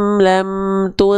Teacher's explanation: mentang-mentang sebelumnya dhammah, jangan sampai ketika ikhfa bibir kita masih monyong